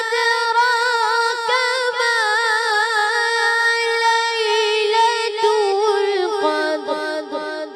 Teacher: دال کو باریک اور قاف کو پر